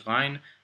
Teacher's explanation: The ghain is pronounced sort of like a French gha sound or a gargling noise.